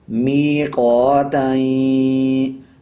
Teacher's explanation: اب تا کے اوپر دو زبر ہے تو تا کو یا کے ساتھ ملائیں گے اور درمیان والا الف سکپ کر دیں گے